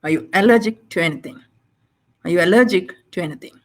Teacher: So it's overall rising, but allergic takes an additional stress.